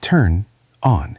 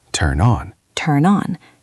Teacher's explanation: The N moves over. It sounds like the word non.